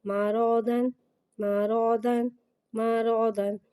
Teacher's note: رو، رو کو ایک الف یعنی 2 حرکات کے برابر کھینچ کے پڑھیں گے. رو پہ زبر ہے، زبر کو منہ کھول کے ادا کریں گے اور رو کو موٹا پڑھیں گے. دود، دود کو ایک الف یعنی 3 مقدار کھینچ کے پڑھیں گے.